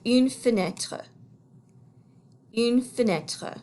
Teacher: this first e here almost sounds like it doesn't exist at all so it almost sounds like it's just the f sound followed by the n sound